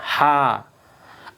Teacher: Ha itu caranya ha tapi di atas sini. Dia di tenggorokan bagian tengah. Ha. Alhamdu.